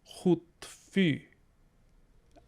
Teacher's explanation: we get that nice front rounded vowel that you see in french and german which if you've ever been curious how to pronounce that sound